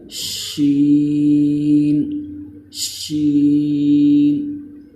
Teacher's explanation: جب زبان کا درمیان اوپر والے تالو سے لگے تو اس سے شین ادا ہوتا ہے